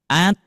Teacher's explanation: kita mengucapkan seperti ini, at itu tandanya pangkal lidah tidak naik. Maka harus dinaikkan.